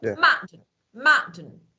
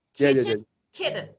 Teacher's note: when I want to pronounce letter T I cut off the sound my throat